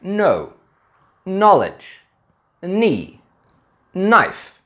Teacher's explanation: In these words, we don't say the 'k' and we only say the 'n'. The reason is, for the most part, English doesn't have a 'kn' sound.